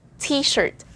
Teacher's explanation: the first t should be popped because it begins the word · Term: pop t